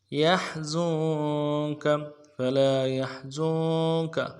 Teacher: ہا گہرائی والا حرف سے گہرائی سے ادا کریں گے، اور زا کو نون کے ساتھ ملانا ہے، نون ساکن کے ساتھ، نون ساکن میں غنہ کریں گے، زا کی سیٹی باریک ہوگی۔